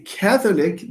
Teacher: the stress falls on ka